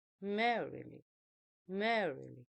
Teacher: a stress syllable followed by two unstress syllables